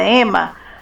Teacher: na palavra ema a letra e tem o som menos intenso e deixamos a boca pouco aberta